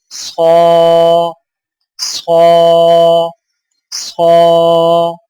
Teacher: صاد موٹی اور سیٹی والی ادائیگی کے وقت زبان کی نوک کو سامنے والے نیچے کے دو دانتوں کے کناروں سے مضبوطی سے لگائیں اور زبان کے پچھلے حصے کو تالو کی طرف بلند کریں